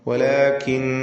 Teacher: അല്ലാഹ് എന്ന ഇസ്മുൽ ജലാല ഇതിലുള്ള ലാമിനെ തഫ്ഖീം ചെയ്ത് തടിപ്പിച്ചുച്ചരിക്കുകയാണ് വേണ്ടത്. വലാകിന്നല്ലാഹ, ഇസ്മുൽ ജലാലയിലെ ലാം തൊട്ടു മുമ്പിൽ ഫത്ഹ വന്നതുകൊണ്ടാണ് അങ്ങനെ തഫ്ഖീം ചെയ്യുന്നത്.